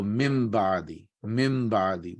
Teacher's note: And that is, you actually pronounce noon. No, you actually don't pronounce the noon. You actually pronounce mim. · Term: iqlab